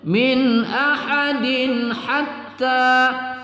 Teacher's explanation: Dal berbaris tanwin bertemu ha juga kita baca izhar halqi tidak berdengung Min ahadin Hatta ta kita baca satu Alif dua harakat yaququ